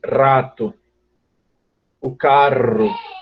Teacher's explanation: se vocês pronunciarem isso dessa forma vocês vão perceber que a língua vibra algumas vezes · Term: vibração